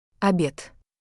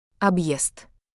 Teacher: the hard sign forces a Y glide between consonant and vowel